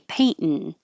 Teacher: the T position which is the same position paint and then instead of releasing the T Paint you hold it there and go n you just make the N noise so paint N Paint n and that's very similar to this